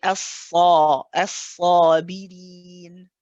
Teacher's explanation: The alif will continue the heavy sound of the sad.